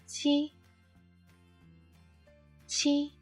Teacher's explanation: use the tip of your tongue to press the upper gum, allowing air to pass through the back of your tongue and burst into sound.